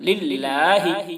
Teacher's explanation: والحمد للہ، اللہ کے لام کو باریک